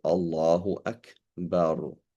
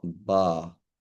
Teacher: You can't drop the ra as you would in British English